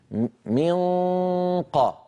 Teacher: أقصى اللسان قد التصق بالحنك اللحمي وانقفل هذا المكان، ما عاد في صويت فموي، كل الصوت يتحول عن طريق الخيشوم غنة فقط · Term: إخفاء